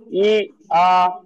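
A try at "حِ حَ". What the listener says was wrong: ই আ না, হা জেরে হি হয়, হা জের ই হয়, হয় কি করে, হা জেরে হি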